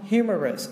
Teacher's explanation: Humorous, trọng âm rơi vào đầu này